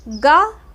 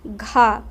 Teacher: फिर उसके बाद गा के उच्चारण में प्राणवायु कम बाहर निकलेगी, गा, घा, तो गा में कम निकल रही है, गा अल्प प्राण हो जाएगा, घा महाप्राण हो जाएगा